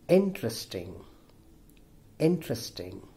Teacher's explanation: the first syllable in is stressed